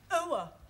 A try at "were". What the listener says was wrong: Try again, but this time, don't say ower, just were.